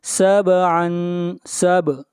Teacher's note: سب با کے اوپر قلقلہ ہوگا